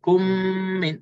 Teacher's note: kedua-duanya huruf mim dan kedua-duanya keluar daripada 2 bibir mulut atas dan bawah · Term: idgham syafawi